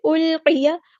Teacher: قاف ہمارا heavy letter ہے پورا ادا کریں گے ، یا کے زبر کو ہم لمبا نہیں کریں گے، فیہا،